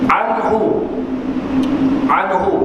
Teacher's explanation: makhraj bagi huruf Ain terletak di tengah rongga tekak dua huruf yang berada di tengah rongga tekak di bahagian rongga